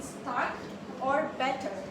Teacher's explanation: So for general American, it is rhotic as we know because the R is clearly pronounced at the end of the words or before consonants. So for example that we put here is R is basically pronounced in start or better.